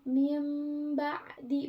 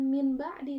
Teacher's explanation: Nah, huruf iqlab tuh cuman satu, yaitu huruf ba. Nih, jadi merubah bunyi nun sukun dan tanwin menjadi mim. Nah, pokoknya ciri-ciri huruf iqlab tuh yang ada, kalau ada nun mati dan di depannya tuh ada ba dan di atasnya tuh ada mim kecil.